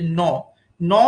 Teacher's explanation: ন বলার সময় খেয়াল করে দেখো, ত থ দ ধ বলার সময় দাঁতে স্পর্শ হচ্ছিল, কিন্তু যখন ন উচ্চারণ করা হচ্ছে তখন ওই জিভের প্রান্ত দেশটা আমাদের ওপরে মানে ওপরের যে দাঁত সেই দাঁতের মূল অংশটা বা দাঁতের মূলকে স্পর্শ করছে, সেই কারণে এটা হচ্ছে দন্তমূলীয় ধ্বনি।